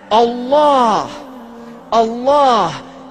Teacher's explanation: It begins with a Hamza, which is at the deepest articulation of the throat. And this is where the name of Allah is emanating from the point in which human vocalization is possible.